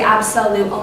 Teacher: we see an O there but really we hear the UH vowel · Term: the schwa